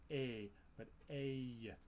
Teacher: It has a y sound at the end, and it's often transcribed ey in the IPA by linguists to represent that.